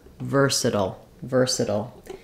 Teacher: And it's stressed on the first syllable, ver. So ver is long and sutil are short with reduced vowels.